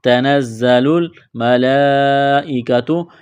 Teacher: یہ لمبی مد ہے، 4 الف کے برابر کھینچنا ہے